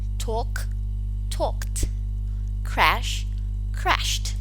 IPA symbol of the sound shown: t